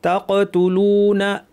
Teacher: তাকতুলুনা, কফ কলকলা এবং ভারী